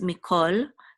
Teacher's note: So Israel loved Yosef, and this is a mem with a hirik, which is me, which means from, and this is a kaf with a kamatz and a lamed, and we're going to pronounce, even though this is a kamatz, it's going to be pronounced the ancient way, which is as a o. So this is mikol, which means all.